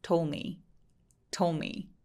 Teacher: 부드럽게 연결하자면 told me 해서 D 발음을 아예 없애버리죠.